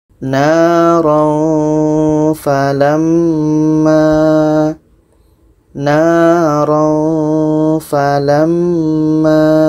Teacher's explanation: Bermakna ini tanwin bertemu fa adalah dengung karena tidak termasuk ro dan lam. Oke, tanwin bertemu fa adalah dengung.